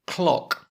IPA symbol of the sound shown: ɒ